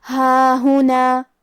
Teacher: ہا پہ کھڑا زبر ہے اور آخری میں بھی مد ہے، تو ہم یہ دونوں مد کو برابر سے ادا کریں گے